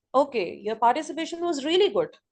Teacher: In the answer, you have to put the ending tone, falling tone to change the expression.